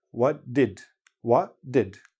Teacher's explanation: if you listen to native speakers, hardly anybody actually pronounces the T.